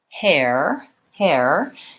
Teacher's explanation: for hair I have the a plus the ER sound so hair I'm gliding between two vowels in words that have